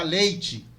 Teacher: ele alça a vogal E para I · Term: alçamento